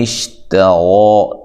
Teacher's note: تا کو باریک پڑھنا ہے، را کو موٹا ادا کرنا ہے، مد اصلی ہے، اچھا لمبا نہیں کرنا۔